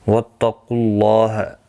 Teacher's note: واتقوا اللہ، قاف مستعلیہ ہے، پر پڑھا جائے گا، اور اللہ کا لام اس پیش کی وجہ سے پر پڑھا جائے گا